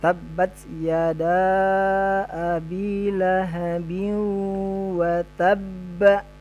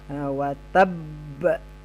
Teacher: pantulan yang besar atau qalqalah kubro, maka kita tahan dulu baru kita pantulkan ya